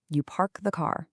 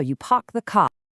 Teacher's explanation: But non-rotitic accents, which are really common in southern England, they drop that R sound unless it's followed by a vowel